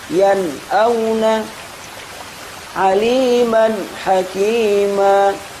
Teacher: Di antara atau salah satu kekurangan yang ada ee apa kita dengarkan ketika mengucapkan izhar yaitu menghilangkan suara gunah yang ada pada nun atau tanwin sehingga suaranya mirip sakta.